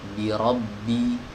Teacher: Huruf ba keluar dari dua bibir ya, keluar dari dua bibir yang ditempelkan.